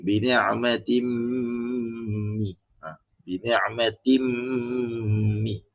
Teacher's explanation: Kita masukkan huruf mim dan kita dengung kan. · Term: Idgham al-gunah